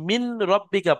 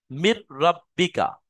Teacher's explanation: তাহলে এটা ঈদগামে তাম বলা হয়, পুরো সম্পূর্ণ ঢুকে যাবে, নুনের আর কোনো অংশ বাকি থাকবে না। নুনটা সম্পূর্ণ রোয়ার মধ্যে চলে আসবে, নুনের কোনো উচ্চারণই বাকি থাকবে না।